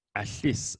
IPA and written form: aɬis (Alice)